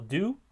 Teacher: the the rhyme would actually be just be a nucleus and that nucleus would be oo and so that would be a simple light syllable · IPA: [du]